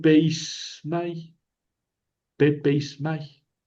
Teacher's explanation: antes de una mi, la dental se convierte en sigma